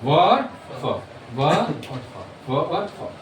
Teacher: ये दांत से और ओठ से मिलके निकलती है। इसलिए इन्ह बोला जाता है दंतोष्।